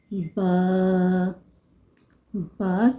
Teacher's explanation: با کو دونوں ہونٹوں کے تر حصے سے ادا کیا جاتا ہے